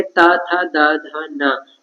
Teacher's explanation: इनका उच्चारण करते समय हमारी जीभ जो है वो दांत से टकराती है, तो इसलिए इनका उच्चारण स्थान माना जाएगा दंत। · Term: दंत व्यंजन